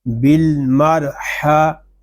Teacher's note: ہا حلق کے درمیان والے حصے سے ادا ہوگا